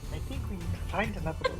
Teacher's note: I was trying to find an Irina voice. It's kind of soft and breathy.